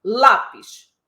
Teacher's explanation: vocês concordam que a tônica é a penúltima sílaba